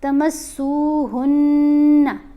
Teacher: غنہ میں نے آپ کو بتایا ہے آواز ناک میں جائے گی اور ہم ایک الف کے برابر ٹھہریں گے